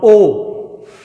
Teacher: While pronouncing O, lip movement will be round